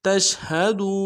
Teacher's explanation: ساتھ ملانا ہے، میم ساکن میں غنہ کریں گے، وانتم تشہدون تا کو شین کے ساتھ ملانا ہے، شین کو واضح کریں گے، تفشی ہے · دال کو واو کے ساتھ ملانا ہے، واو مدہ ایک الف دال میں کھینچیں گے